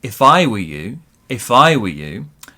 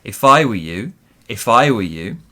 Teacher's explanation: So big stress on I, smaller stress on you.